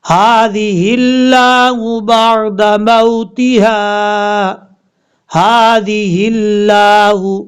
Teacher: ہا کے بعد لفظ اللہ ہے، ہا کو لفظ اللہ سے کنیکٹ کریں گے